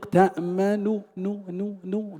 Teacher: والمراد به النطق بثلثي الحركة المضمومة وهي النون الأولى. إذا تنطق تأمن نو بضمة يسيرة ليست تامة، نعطي الضمة ثلثيها ونحذف ثلثا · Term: الاختلاس